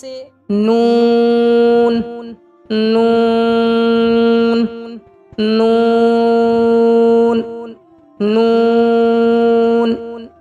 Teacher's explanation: सर जबान जो है जबान का सिरा तालू से मिलकर अदा होता है।